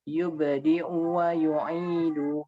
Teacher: U-nya pendek dan lebih istifal